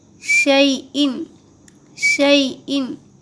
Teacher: علی، علی کل، کل شیئن، شیئن، شین یا زبر شی، یہاں بھی دیکھیے یائلین ہو رہا، یا ساکن سے پہلے زبر ہے اس لیے یائلین ہوگا، اور یائلین کو نرم پڑھتے ہیں اور معروف پڑھتے ہیں، مجہول نہیں پڑھتے. شے نہیں پڑھیں گے، شی پڑھیں گے، شی ان.